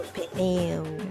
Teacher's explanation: I think that in English the first vowel is usually, in a diphthong, is usually pronounced a little bit shorter, but in Portuguese it's both vowels are pronounced the same way, like pneu, the same amount of time for both